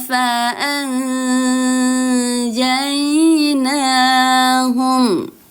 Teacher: Nun sukunnya disamarkan karena huruf jim adalah huruf dari ikhfa hakiki.